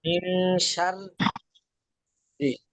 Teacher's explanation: যখন র উচ্চারণ করব রি, তখন পাতলা হবে। · রিটা পাতলা, আর প্রথমবার যেবার সার, হ্যাঁ। সারটা মোটা, রিটা পাতলা।